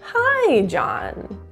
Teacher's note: the word hi can have a really nice high and low wave hi John so the high has a really high and low · at John, we're going in a downward falling intonation. And it also indicates confidence. · so the high has a really high and low waveform and at the very end John we're going in a downward falling intonation